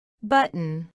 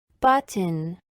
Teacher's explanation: pronunciada con la T glotal y sin ella